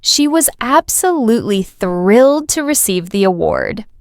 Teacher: You notice how some words are stressed, thrilled, award, while others are spoken quickly, was to. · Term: stress pattern